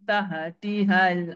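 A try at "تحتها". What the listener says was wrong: jangan taha. Tajri min tahtihal. Dia tak ada qalqalah dekat taha tu. Tak boleh. Tahtihal.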